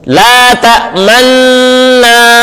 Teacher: پڑھیں گے، لا تأمنا، لا تأمنا، غنہ جب شروع کریں گے، غنہ شروع کرنے کے بعد پھر ہونٹ گول کر کے پیش کی طرف اشارہ کیا، اور غنہ ختم کرنے سے پہلے ہونٹ سیدھے کر لیے ، لا تأمنا، جی یہ واجب ہے، اس کا کرنا ضروری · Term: اشمام